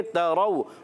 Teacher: ترو، تا پر زبر ہے، را واو زبر رو، را پر زبر آ گئے، را پر زبر آ جائے، پیش آ جائے را پر، را پر ہو جاتا ہے، اور زیر آ جائے تو باریک ہوتا ہے، تو ہم پر کریں گے ترو، اور واو ساکن سے پہلے زبر آ رہا ہے، واولین ہوگا، نرمی سے ادا کریں گے